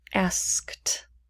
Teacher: the ed sound also does not vibrate and it will sound like a more of a whisper a more soft sound in order to sound similar because that's